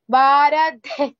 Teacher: here dha is mahaprana and visarga also there